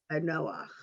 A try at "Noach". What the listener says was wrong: Perfect.